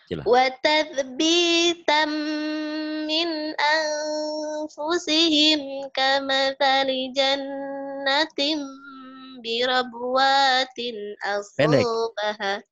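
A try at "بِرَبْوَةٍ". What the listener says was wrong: Birabwatin, enggak ada yang panjang. Birabwat. Kenapa banyak panjang? Kenapa birabwatin? Birabwatin. Pendek ya.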